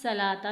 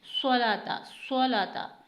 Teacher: स्वाद को आपको मोटा पढ़ना है और सीटी अदा करनी है, स्वाद को सीन नहीं बनाना, यानी व युक़ीमू नस सलाता नहीं, स्वलाता, स्वलाता।